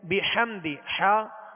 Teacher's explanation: ہا کی آواز کو حلق سے درمیانی حلق سے ادا کریں گے اور واضح کریں گے